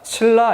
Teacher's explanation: 니은이 리을로 바뀌는 현상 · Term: 유음화